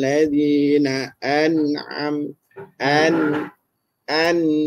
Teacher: sebutan nun yang izhar, dengungnya masih wujud. Ya, sifat dengungnya masih ada. Cuma tidak mencapai ya uh, suara yang saya kata tadi, ditahan suara sampai dua harakat tu tidak ada.